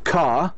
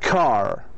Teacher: in the British accent, you should say car without pronouncing the R. In the American accent, you need to say the R. So in the British, you say car, and the American car.